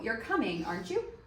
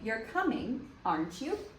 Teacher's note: So, for example, you could say, oh, you're coming, aren't you? And so the first part is not a question. It doesn't have that inflection going up when you ask a question, but you start by saying, you're coming, aren't you?